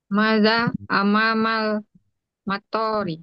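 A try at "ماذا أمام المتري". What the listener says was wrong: Maknya panjang.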